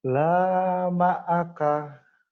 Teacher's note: Pendek, laknya doang yang panjang. Laknya doang yang panjang.